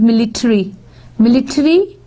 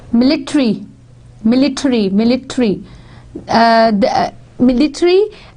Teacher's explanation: American English uses a full vowel rather than a schwa, while British English retains the reduced vowel or elides it completely.